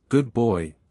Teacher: You started praising your dog, good boy, in a bright, high pitch.